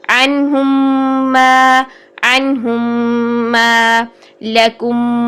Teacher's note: ایک ہی حرف میم ساکن کے بعد میم ہی آنے سے میم کا ادغام ہوتا ہے. ٹھیک ہے, تو یہاں پر بھی ہم 2 حرکات کا غنہ کرتے ہیں.